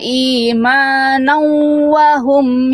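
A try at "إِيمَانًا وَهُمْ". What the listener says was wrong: Sama ya, imanau. Kurang ditahan ya, idgham biguna. Tuh, imanau. Fathatain ketemu au. Ya, tahan. Di buku juga ada bahasan idgham biguna.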